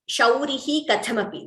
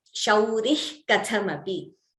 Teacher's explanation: We do not chant the Visarga completely. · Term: Jihva Muliya